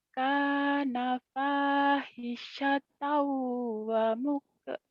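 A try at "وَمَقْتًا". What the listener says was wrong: Wamak bukan wamuk. Wamakta. Kana fahishatan wa maqta'a.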